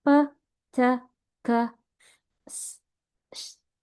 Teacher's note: the vocal cord do not vibrate, it's only air pass through. So you will not feel buzzing on your throat, such as when you say p, t, k, s, sh, j, h, and th. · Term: voiceless consonant